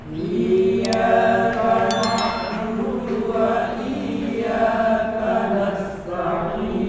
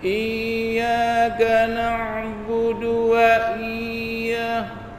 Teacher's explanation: Yang saya baca adalah i-nya saya panjangkan.